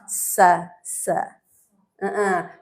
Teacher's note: Sa itu di ujung lidah lebih dekat ke gigi bawah, bertemu dengan gigi bawah.